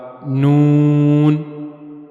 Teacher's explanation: زبان کی نوک کو اوپر کے اگلے دو دانتوں کے مسوڑوں کے ساتھ ملانا ہے اور وہاں سے نون ادا ہوگا، نون۔ کوشش کریں زبان کی نوک کو اوپر کے جو اگلے دو دانت ہیں ان کے جو مسوڑے ہیں اندر کی طرف وہاں پہ رکھیں، وہاں پہ ملائیں، نون۔ · जबान की नोक जब ऊपर के अगले दो दांतों के मसूड़ों के साथ जाकर मिलेगी तो वहां से नून अदा होगा।